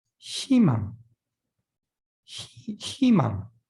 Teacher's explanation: Consonant plus 의, you can pronounce as e.